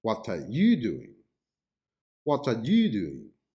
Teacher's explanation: the focus is on the person you and this means that maybe you are not the right person to do the action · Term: focus stress